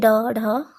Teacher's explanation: उत्क्षिप्त, जिनके उच्चारण में जीभ पहले ऊपर उठकर मूर्धा का स्पर्श करे और फिर झटके के साथ नीचे आए